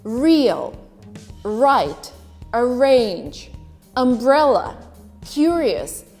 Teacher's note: This is not true for every accent out there, but in received pronunciation in Great Britain, you would only pronounce the R that is followed by a vowel.